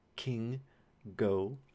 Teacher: K and G, as in king and go, these are your velar stops. So you have airflow being held right behind the velum and then it's released